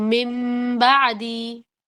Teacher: اقلاب میں خاص چیز یہ ہے کہ میم کی آواز ناک میں بھی رکھنی ہے، یعنی کہ کامل غنہ کرنا ہے. اس میں یہ غنہ والا رول ہے.